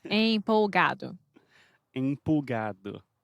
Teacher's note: você fala tempo e daí você fala por exemplo é empo é uma vogal nasal